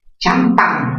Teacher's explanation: Champán, mayor fuerza en qué sílaba? En la sílaba pan. Es una palabra aguda, terminada en N.